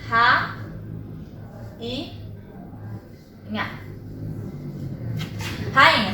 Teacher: O I continua sendo a minha sílaba tônica, continua sendo a minha sílaba mais forte.